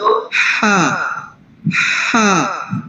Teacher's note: ہا ادا ہوگا حلق کے بالکل درمیان والے حصے سے · مین جو چیز ہے وہ سانس کی جو آواز ہوتی ہے، سانس جیسی آواز ہوتی ہے